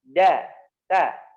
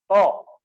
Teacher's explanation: huruf to ya dibaca menebal karena suara dan pangkal lidahnya naik, ya, karena to memiliki sifat isti'la, ya, wa sab'u ulwin khussadagtin qid, ya, khussadagtin, khussa, khasa, do, ga, to, ko, dan do.